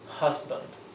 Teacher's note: La H, por ejemplo, es más suave que la J nuestra. Es es como una exhalación.